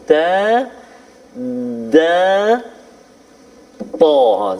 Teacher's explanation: Kadang-kadang kita terlupa lagi dekat mana tempat keluar huruf-huruf Al-Quran itu sendiri, dan kita nak sentuh hari ini, iaitulah makhraj al-lisan, iaitulah hujung lidah diangkat menekan siratan gusi, yakni pengikat gigi, dan pangkal gigi kacip tengah